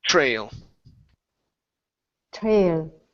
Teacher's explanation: So the tr is going to switch to a chr sound.